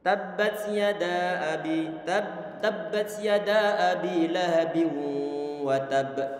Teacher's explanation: ana baca misalnya untuk mad jaiz munfasil yang pertama, ini dengan kadar 2 harokat